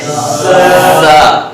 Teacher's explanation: آپ کی جو نوک زبان ہے یہ اوپر نیچے کے، یعنی اوپر کے بھی دانت اور نیچے کی بھی دانت، ان کے بیچ میں زبان کی نوک رکھتے ہیں ہم، اور وہ بھی اندر والے حصے سے، اور تھوڑا سا سختی سے جب ادا کرتے ہیں تو زا ادا ہوتی ہے.